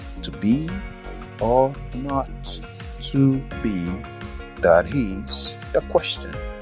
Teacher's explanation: line of verse with five beats it is five penta where each beat falls on the second syllable